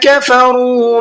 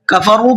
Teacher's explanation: کفرو کے اندر را کو منہ بھر کے پڑھنا ہے، یعنی کہ پر کر کے پڑھنا ہے۔ کفرو اور ساتھ میں کھینچ کر کے بھی پڑھنا ہے۔